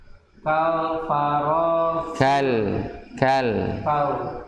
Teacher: Ka mempunyai sifat syiddah dan hamas. Ya. Syiddah dan hamas. Artinya syiddah ini kuat, bunyi yang kuat.